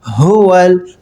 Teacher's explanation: ہا کی ساؤنڈ حلق کے سب سے نیچے والے حصے جو سینے کی جانب ہے وہاں سے ہا ادا ہوگی